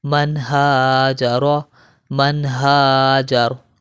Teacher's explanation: نون ساکن کے بعد دیکھیں ہا آ گیا ہے، تو یہاں پر ہم غنہ نہیں کریں گے